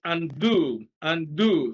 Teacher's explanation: stress is on the second syllable